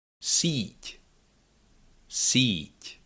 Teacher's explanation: the only part of the tongue that does the job and restricts the passage of air and then lets it go, is the middle of your tongue